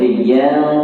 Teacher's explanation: Kita kena baca sebutkan gunnah pada nun itu dengan samar-samar. Kita tak baca yan, tapi kita baca yang. Syarat mudah dia, lidah kita tidak menyentuh pada langit. Lidah kita tak boleh sentuh langit, tak boleh. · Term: ikhfa hakiki